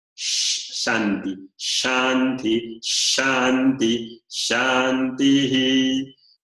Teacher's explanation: sino sh es una s que deja pasar más el aire Es una s palatal la lengua se coloca un poco más hacia arriba de cerca del paladar duro